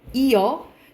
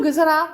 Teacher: 시옷이 모음 어미 앞에서 탈락하는 겁니다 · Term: 시옷 불규칙